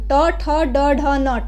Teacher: ये मुर्धन्य मुर्धा से बोले जाते हैं